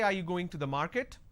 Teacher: But when I say, are you going to the market? Then it's a rising tone.